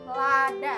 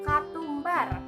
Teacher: Nah, bunyi vokal yang pertama adalah A, yaitu vokal belakang, rendah, netral, dan terbuka yang terjadi apabila lidah berada dalam posisi serendah mungkin